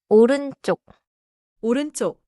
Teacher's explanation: 오른쪽 has a tight double sound in 쪽. Do not stretch it too much.